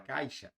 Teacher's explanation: A letra I. Então, da letra A para a letra I, o som desce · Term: ditongo decrescente